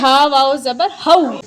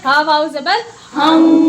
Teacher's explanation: تنوین کے بعد جب واو آئے گا تو یہاں بھی ناک میں آواز جائے گی، جس کو ادغام مع الغنہ کہتے ہیں. اس کا ہیچے کریں گے ہا واو زبر ہم.